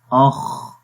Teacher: حمس کے اندر، حمس کا جو مطلب ہے وہ ہے پستی، یعنی کہ آواز کے اندر پستی آ جاتی ہے، ضعف آ جاتا ہے۔ تو اس حرف کو جب پڑھیں گے تو اس کے اندر سانس جاری رہتا ہے · سانس کا بھی جاری رہنا اور آواز کا بھی جاری رہنا، دونوں صفات اس خا کے اندر پائی جاتی ہیں